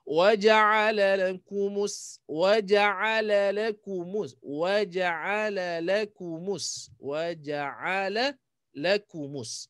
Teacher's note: mus sin safir lebih kan sikit sebab sabdu